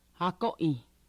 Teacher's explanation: It's very smooth. The way she starts akoi, it's very smooth without a glottal stop. · it was very smooth, almost like there was an H with like no breath